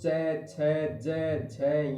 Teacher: च यानी अपनी जीवा है, अपनी जीभ है, वो च, छ, ज, झ ये बोलते हैं। तो जीभ का अगला भाग है वो बार बार हमारे तालु को थोड़ा थोड़ा टच करता है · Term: तालव्य व्यंजन